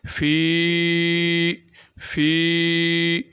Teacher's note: فا کے بعد یا مدہ ہے تو ایک الف کے برابر فا جو ہے یہ لمبی ہوگی، فا جو ہے وہ لمبا کر کے پڑھیں گے۔